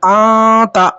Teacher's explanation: آتا، انتا نہیں پڑھنا، آتا نون کی آواز ناک میں چھپ گئی، آتا، اور غنہ بھی ہو گیا.